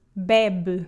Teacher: The first E is open and the second is reduced.